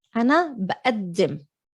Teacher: Obviously the qaf is a hamza.